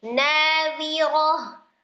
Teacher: Ketika diwakafkan maka dia akan menjadi sukun. Nah, tak marbutoh yang disukun itu dibacanya menjadi huruf ha sukun. Jadi bacanya nadhiroh, tapi bukan dengan memanjangkan huruf roh.